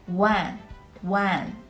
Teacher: Wan, which is pronounced the fourth tone, means 10,000. When you pronounce it, Wan is a little bit like wow, or the first pronunciation of wonderful, Wan, Wan.